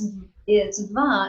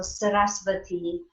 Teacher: it's kind of a soft, so it's almost like a VW combination